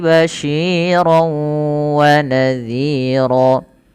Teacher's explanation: hati-hati dalam syinnya ini sering terjadi juga dengan banyak yang tidak perhatian dia mengganti dengan bunyi Sin